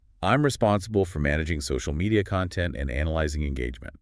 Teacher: when you use I'm responsible for, try letting your voice go up slightly on responsible. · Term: little lift in your voice